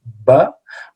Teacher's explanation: when we say ba this is a bilabial sound